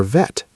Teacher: For the V sound, your upper teeth lightly touch your lower lip and you vibrate with voice.